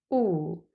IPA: u: